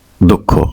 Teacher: যেই বর্ণটা এই বিসর্গের পরে থাকবে সেই বর্ণ যদি মহাপ্রাণ হয় তাহলে সেই মহাপ্রাণের আগে যে অল্পপ্রাণ সেই অল্পপ্রাণটা আসবে তার মানে খর আগে হচ্ছে ক তার মানে দুঃখ খ দুঃখ